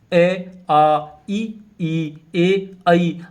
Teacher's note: तो अ वृत्ताकार में क्या होता है कि उच्चारण करने पर ओठों का आकार गोल न होकर ऊपर नीचे फैल जाता है तो उन्हें अवता का या अव्रत मुखी स्वर कहते हैं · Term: अवृत्तमुखी स्वर